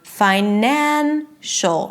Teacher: Once I add the suffix, then it turns into 'fi-NAN-cial'. From 'fi-' it shifts to the second syllable - NAN - the one syllable before the suffix.